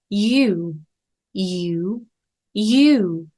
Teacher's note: 입술 충분히 당겨서 유라고 시작한 다음 유 한번 꺾어 내려오세요